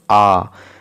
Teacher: এই হস্যই হস্য উচ্চারণ করতে যতটা না হা করতে হচ্ছিল, আ উচ্চারণ করতে গেলে কিন্তু বেশি হা করতে হচ্ছে। মুখবিবরের যে আকার সেটা বেশি বৃদ্ধি পাচ্ছে, আয়তনটা বেশি হচ্ছে, এই জন্য একে বলবো বিবৃত।